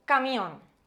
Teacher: Encontramos dos vocales juntas, una cerrada y otra abierta, camión. La vocal tónica es la O, por tanto estamos ante un caso de diptongo